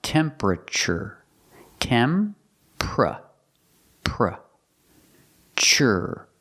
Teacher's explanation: this is one of those words that looks like four syllables but we don't say temperature we say three syllables